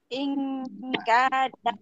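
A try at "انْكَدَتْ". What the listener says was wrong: Nah, itu ukuran 2 harokat, Bu ya.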